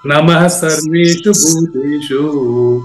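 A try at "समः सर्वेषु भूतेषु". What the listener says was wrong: అది నమః కాదండి, సమః. సమః సర్వేషు భూతేషు.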